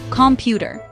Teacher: Americans often say the T like a soft D in the middle.